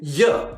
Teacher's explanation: the use of ah instead of I and ya instead of you